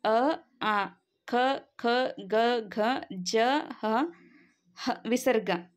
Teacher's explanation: ನಾವು ಕಂಠದ ಸಹಾಯದಿಂದ ಉಚ್ಚಾರ ಮಾಡ್ತೀವಿ ಹಾಗಾಗಿ ಇದು ಕಂಠ್ಯ ವರ್ಣಗಳು ಕಂಠದಲ್ಲಿ ಹುಟ್ಟುವಂತಹ ಅಕ್ಷರಗಳೆಲ್ಲ ಕಂಠ್ಯ ವರ್ಣಗಳು ನೆಕ್ಸ್ಟ್ ತಾಲವ್ಯ ಅಕ್ಷರ ತಾಲು ಅಂತ ಅಂದ್ರೆ